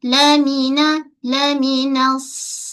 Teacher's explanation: Lamina nun nipis dulu pada sad baru tebal.